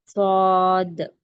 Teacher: زبان کی نوک کو بیچ میں رکھیے، دونوں گالوں کو تھوڑا سا پھلائیے اور موٹا کر کے پڑھیے، صاد۔ یہ اس کا مخرج اور صفت ہوا۔